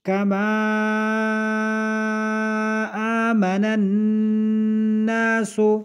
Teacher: کما میں مد ہے اور آمن الناس یہ جو نون مشدد ہے اس میں غنہ ہے